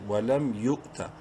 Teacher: حمزہ سے یا کو ملاتے وقت جھٹکے سے پڑھیں گے